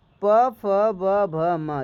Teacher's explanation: तो आप समझ ही गए होंगे कि होठों से है ना होठों से स्पर्श कर रहा है